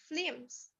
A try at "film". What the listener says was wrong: Okay, it's not flames, it's fill.